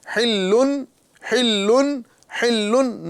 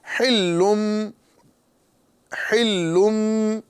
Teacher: گنہ کے ساتھ پڑھنا ہے اور میم سے بدل کے پڑھنا ہے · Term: اقلاب